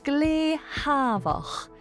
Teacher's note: S lenites to a H sound. Savach, quiet, becomes glehavach, very quiet.